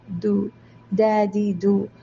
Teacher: ദാലാണ് കാറ്റില്ലാതെ ദാല് നാവ് കൊണ്ട് ഉച്ചരിക്കുക.